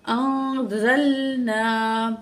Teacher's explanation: نون ساکن کے بعد زا ہے، حروف اخفا میں سے ہے، نون کی آواز کو ناک میں چھپا کے پڑھیں گے. انزلنا مد ہے، تو یہ مد منفصل ہے کیونکہ حمزہ دوسرے کا لیٹر میں آ رہا ہے، تو یہاں 3 الف کے برابر الف کو کھینچ کے پڑھیں گے.